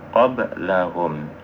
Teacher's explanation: Namun bentuk dari qalqalah ini ada macam 3. Ada qalqalah sughra namanya, ketika dia terapit dengan huruf yang lain atau di tengah-tengah seperti qablahum.